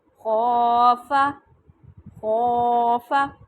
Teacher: فا کو میں نے لمبا نہیں کیا، خو کو لمبا کیا، فا نہیں کہنا، ٹھیک ہے۔